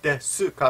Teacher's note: the U is almost always silent in Japanese. Desu ka. But because of the hiragana, the way things are spelled, su, the hiragana letter su is made up of consonant and vowel, so desu ka.